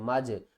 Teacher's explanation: حروف قلقلہ 5 ہیں، قاف طا با جیم دال، اگر ان میں سے کوئی بھی حرف ساکن ہو جائے تو اس کو ہم نے ہلا کر پڑھنا ہے، اگر متحرک میں ہے تو پھر ہم اسے ہلا کر نہیں پڑھیں گے۔ یہاں پر جیم ساکن ہے تو ہم کیا کریں گے، اسے ہلا کر پڑھیں گے